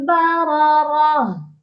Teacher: اس لفظ پر وقف کرتے وقت ہا کو ساکن کرنا ہے، یعنی اینڈ پر ہا کا ساؤنڈ آئے گا۔ براراہ، براراہ کی تنوین پر اظہار نہیں ہوگا، یعنی یہاں پر ہم غنہ کریں گے کیونکہ اس کے آگے حروف حلقی نہیں ہے اور نہ ہی لام اور را ہے۔